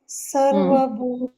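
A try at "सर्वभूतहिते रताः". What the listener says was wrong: ತ ಇದೆಯಲ್ಲ ತ ಇದ್ದಾಗ ವಿಸರ್ಗ ಕೂಡ ಆನೆ ಬರುತ್ತೆ ತಾಹ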